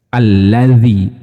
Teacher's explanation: Kalau zal ini yang ada titiknya, dia mempunyai sifat rokhawah, nafasnya suaranya ngalir. · Allazi ini menggunakan zal. Ujung lidah bertemu dengan gigi seri bagian atas.